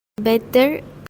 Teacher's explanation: The glottal stop is not present since the t sound is pronounced clearly as a plosive.